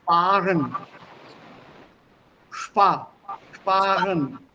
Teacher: That R comes from the back of the throat.